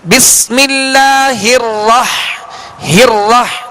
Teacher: را پر اب زبر ہے تو اب اس کو ہونٹ گول نہیں کرنا بلکہ آواز اور منہ کھول کر پڑھنا ہے